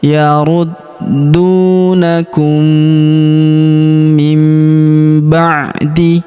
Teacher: Kemudian huruf mim sukun bertemu huruf mi berharakat tasydid. Maka mim sukunnya melebur ke huruf mi. Kita tahan dan kita tekan serta kita dengungkan dua sampai 3 harakat.